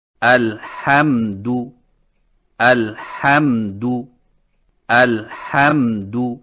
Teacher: ان سے بچنے کا طریقہ یہ ہے کہ میم ساکنہ کو ادا کرتے وقت ہونٹوں کے خشک حصوں کو اس طرح مضبوطی سے بند کریں کہ جھٹکا پیدا نہ ہو، اور بند کرنے کے فوراً ہی بعد اگلے حرف کو ادا کریں